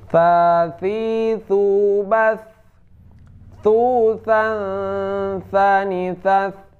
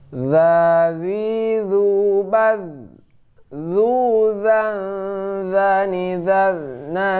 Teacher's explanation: kalau tha ini hamas, keluar angin. Kalau za tidak